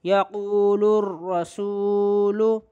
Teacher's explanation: یہ لام پڑھا نہیں گیا، لام را یعنی ڈائریکٹ را پڑھا گیا، بس اسی کو ادغام کہتے ہیں، لام تعریف کا ادغام اسی کو کہتے ہیں۔